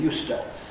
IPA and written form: ˋjuːstə (used to)